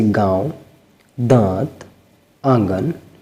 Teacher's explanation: ऐसे स्वर जिनका उच्चारण नाक और मुंह से होता है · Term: अनुनासिक